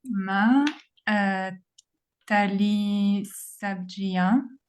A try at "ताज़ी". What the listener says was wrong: Tazi, the J sound. J sound. Tazi.